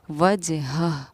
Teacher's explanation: اس ہا کو ہم سینے سے پڑھتے ہیں